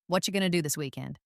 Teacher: Did you hear how what are you going to was compressed into what you gonna? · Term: connected speech